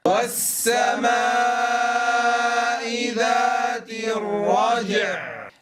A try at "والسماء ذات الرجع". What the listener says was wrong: نتنبه أيها الأحبة ألا نجعل الجيم مكسورة، فلا أقول والسماء ذات الرجع جع ج ج ج ج، وإنما تكون ساكنة الرج ثم أنطق عينا ساكنة مع إعطائها زمن البينية. الرج والسماء ذات الرجع الرجع